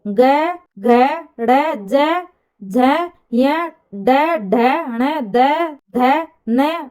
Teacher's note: स्वरतंत्रियां कंपित होती हैं उसे घोष व्यंजन कहा जाता है